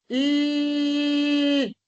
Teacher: Porque el aire sale por los lados de la cavidad bucal. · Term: lateral alveolar